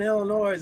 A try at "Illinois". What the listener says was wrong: Time out. I'm from the Midwest. The S is silent.